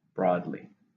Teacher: How many syllables are in broadly? 2. Stresses on the first.